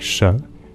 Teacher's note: run your tongue up from your gum Ridge further back towards your palate you can make a post alveolar sound